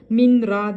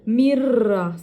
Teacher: sakinden sonra ra gelmiş o zaman ne yapıyoruz minra değil mirra sanki ra Şedde varmış nun iç yokmuş gibi